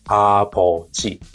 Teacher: When it comes to middle of the word, like 아버지, what do you hear? It should be closer to B. It becomes more voiced like B in baby.